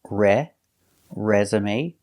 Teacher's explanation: your first syllable is stressed re resume using the short s sound like egg and bed